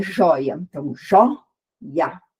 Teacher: o o é a sílaba tônica, digamos assim, junto com o i, que forma o ditongo, e o azinho ali do lado, que é uma vogal separada. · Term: ditongo decrescente